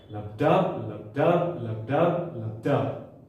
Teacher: Okay, the heart emits 2 sounds, okay, as we know them scientifically as lub and dub. So the first sound is a shorter sound, lub, and the second one is a more prominent sound, dub.